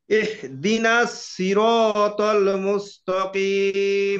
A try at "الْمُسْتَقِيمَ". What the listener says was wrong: ত হয়ে যাচ্ছে ত আকারে তা।